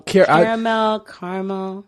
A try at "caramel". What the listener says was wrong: No, you take that A out of it. It's spelled Caramel.